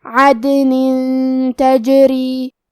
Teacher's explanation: تا حروف الاخفاء میں سے ہے اور اخفاء کا معنی ہے چھپا دینا، تو ہم تنوین کو چھپاتے ہوئے اور غنہ کے ساتھ یہ حکم کو ادا کریں گے